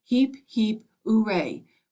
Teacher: shouted heap heap uray with the accent on the oo